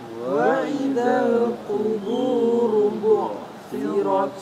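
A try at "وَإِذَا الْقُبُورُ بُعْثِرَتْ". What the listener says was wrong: Ya, perhatikan huruf qaf. Qubu, qubu. Ya, bukan kaf, qubu ya. Jadi ditebalkan lagi qafnya. Yang kedua, ain sukun, bu'thirat. Bu'thirat. Bunya disempurnakan dengan memajukan kedua bibir. Ketika ain sukun maka kembali. Wa idzal quburu bu'thirat.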